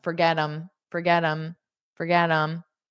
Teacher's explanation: in spoken English we generally take them and then we just pronounce it as mm